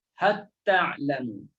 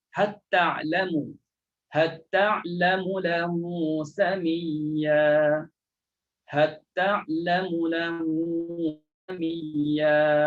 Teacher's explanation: Jangan nampak lagi lam. Terus sebut ta. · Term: idgham